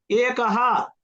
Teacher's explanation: అస్తి గాయకాః గాయకాః అస్తి మీరు హ అంటే నాకు వినిపించాలి క్లియర్ గా విసర్గ ఉన్న దగ్గర హ అని వినిపించాలి చాలా క్లియర్ గా నాకు